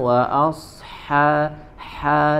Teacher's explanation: Kemudian huruf ha lebih dijelaskan, wa asha ha, dari tenggorokan bagian tengah ya.